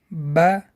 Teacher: буква Б произносят плотно смыкая обе губы